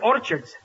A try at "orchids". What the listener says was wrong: It's not orchards, it's orchids. The CH is pronounced like K.